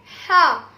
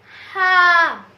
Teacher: چے والے ہا کو باریک پڑھتے ہیں جیسے ہا, اور اس کی حلق سے آواز نکلتی ہے